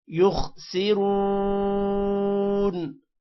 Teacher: خا موٹا ہوگا، را بھی موٹا ہوگا، را کے بعد واو ہے، تھوڑا سا لمبا کریں گے